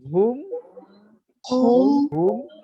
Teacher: আপনার মিমের উচ্চারণের স্থানটি হলো ঠোঁটের শুকনা জায়গায়।